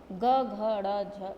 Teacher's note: दूसरा है सघोष व्यंजन, इन ध्वनियों के उच्चारण में स्वरतंत्र में कंपन होता है